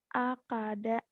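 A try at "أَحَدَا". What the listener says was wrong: Akada. Ahada. Itu eha. Kamu maha ketukar pakai kak. Kok jadi ho. Ahada. Eha.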